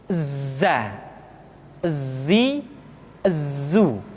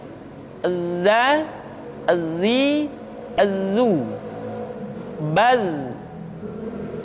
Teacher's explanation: huruf za bersifat al-jahr. Artinya ketika kita mengucapkan huruf za, suara kita mengalir, akan tetapi nafas tidak boleh mengalir.